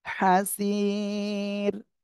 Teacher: হাসির। এখানে দেখেন জেরের বামে জজমালা ইয়া এক আলিফ মাদ আর এখানে ওয়াকফ করলে সাকিন আর র সাকিন হয়ে যাচ্ছে তার ডাইনে আবার ইয়া সাকিন, এর জন্য আপনি চিকুন করে পড়বেন রটা।